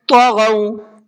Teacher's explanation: الذین طغوا فی البلاد، طغوا، طا کو بھی اور غین کو بھی دونوں کو پر کر کے پڑھنا ہے، منہ بھر کے پڑھنا ہے